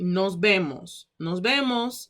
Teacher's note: because in spanish speaking with that swag you pronounce the v's like bees